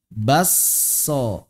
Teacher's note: Huruf keduanya bertasydid. Berarti K-nya hilang, S-nya dobel. Jadilah baso. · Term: idgham